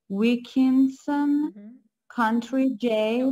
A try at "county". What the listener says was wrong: No, it's county. It's not country. County.